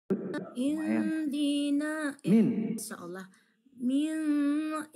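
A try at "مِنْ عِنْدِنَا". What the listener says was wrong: ya, min ini ain yang menyambung, jelaskan saja minnya tanpa mendengok. Min indina. Jangan didengok. Ya gitu boleh ditahannya lama-lama, Kalau ditahan lama-lama itu namanya dengok. Min aja itu tak dengok. Kalau nun sukun bertemu dengan salah satu huruf yang 7, nunnya dibaca jelas tanpa berdengung. Hukumnya izhar.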